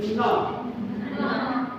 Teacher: The tongue is bound to the upper teeth, right?